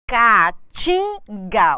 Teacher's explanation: Caatinga, o que eu tenho aqui? A tonicidade está em tim.